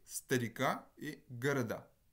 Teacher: le A et le O se retrouvent avec exactement la même réalisation lorsqu'ils ne sont pas en position accentuée. Par contre, cette réalisation, cette fois-ci, c'est un schwa. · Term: neutralisation